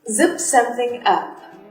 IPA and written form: zɪp sth ʌp (zip sth up)